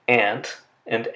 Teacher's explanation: The nasal sound n agrees in the place of articulation with the stop that follows, the t or the d. They're both made using the same articulator on the alveolar ridge.